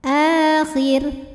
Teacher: mad badal karena ada hamzah yang dipanjangkan. Dibacanya panjang 2 harokat.